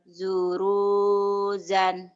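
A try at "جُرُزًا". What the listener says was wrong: jurusan nggak ada yang panjang. Keenakan panjang melulu jurusan.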